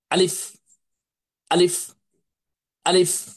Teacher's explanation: আলিফ অক্ষরটি বা হরফটি কণ্ঠনালীর শুরু থেকে বা গলার শুরু থেকে জোরে সোরে ধাক্কা দিয়ে দ্রুততার সহিত ধমকের সুরে উচ্চারণ করতে হয়